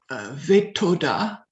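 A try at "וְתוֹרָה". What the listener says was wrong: No, that's a race. So it will be what? Okay, so this one, remember, that will be the ve, right? Ve, D.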